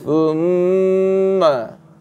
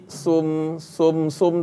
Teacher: Lidah kena keluar. Di antara dua gigi atas bawah ni thumma. Jangan bunyi sum tak nak.